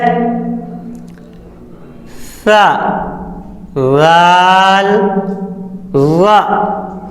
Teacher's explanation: زبان کی نوک اور سامنے کے اوپر والے 2 دانتوں کے کنارے سے ادا ہوتے ہیں